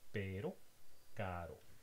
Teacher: The tongue touches the alveolar ridge very rapidly and very lightly. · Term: alveolar tap